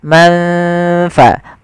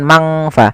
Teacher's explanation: Maka samarkan ke huruf fa, manfa, bukan mangfa. Tidak semua bacaan ikhfa dibaca dengan ang, tapi dia disesuaikan dengan hurufnya dan sifatnya.